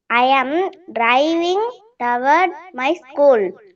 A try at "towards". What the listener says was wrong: Toward illa towards. Towards. And the S varanam. Towards. Towards. Towards இல்லனா towards. அப்படி கூட சில டைம் சொல்லலாம், தப்பு இல்லை.